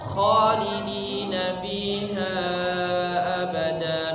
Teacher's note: kesalahan yang sering terjadi kalau mengucapkan huruf kha adalah dia tidak menebalkan huruf kha-nya. Jadi biasa seperti huruf h tapi bunyinya o.